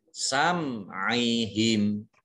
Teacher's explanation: Mim sukun bertemu dengan huruf ain, ini dibaca jelas, izhar syafawi. Nah, kemudian ini waqaf, himnya dibaca pendek ya, karena tidak ada tanda panjangnya.